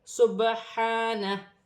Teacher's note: سین حرف اخفا میں سے ہے، با ساکن ہے، حروف قلقلہ میں سے ہے، قلقلہ کے ساتھ پڑھا جائے گا